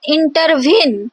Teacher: So inter, these are the two unstressed syllable, and veen, as we emphasize, intervene. So veen is the stressed syllable. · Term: anapest